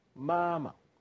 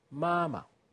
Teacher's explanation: The second one becomes a neutral tone, toneless.